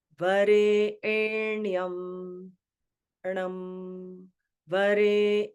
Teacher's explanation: It's a retroflex N where you curl your tongue behind your teeth.